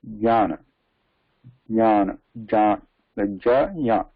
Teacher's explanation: Instead of that, we should, now we know the positions. So when we pronounce ja, immediately pronounce ya there